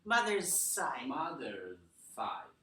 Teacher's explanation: when we link these together, mother's side, it starts out with a z, and then you stop voicing here to make it s, z, z, z. Mother's side.